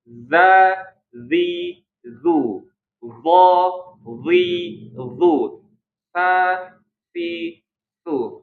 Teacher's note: Ujung lidah bertemu dengan ujung gigi seri atas. Jadi harus ada gesekan